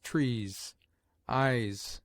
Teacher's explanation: S single at the end of words has a grosser sound, like that of z